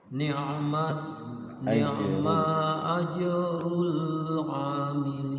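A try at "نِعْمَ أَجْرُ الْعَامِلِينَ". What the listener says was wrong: Sekali lagi maknya pendek.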